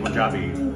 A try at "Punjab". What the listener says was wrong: I was speaking in Punjabi and it's Punjab, not Poon. Pronounced like